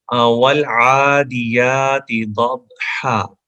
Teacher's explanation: वाव को होंठ गोल करके पढ़ेंगे, क्योंकि होंठों का गोल करना ही वाव का मखरिज है, इसका ओरिजिन है।